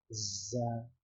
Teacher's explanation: It will have a buzzing sound, a B-like sound when it is pronounced. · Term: letter Z